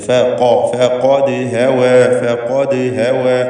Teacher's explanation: ദാലിന് ഖൽഖല സുഗ്റ നൽകി ശബ്ദം ഹറക്കത്ത് പോലെ ചലിപ്പിക്കുക.